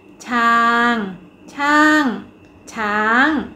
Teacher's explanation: คำว่าช้างเป็นอักษรต่ำผันด้วยวรรณยุกต์โทดังนั้นจะออกเสียงตรี